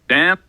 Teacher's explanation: this is something that has a high F1 and a high F2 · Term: low front vowel